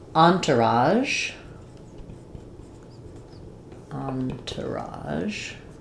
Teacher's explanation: in English, we stress the on syllable. It comes from French and they might stress elsewhere, but we stress on on. · in entourage, in American English, we stress the on syllable.